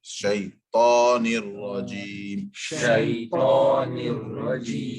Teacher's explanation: ta is without the involvement, without too much involvement of lips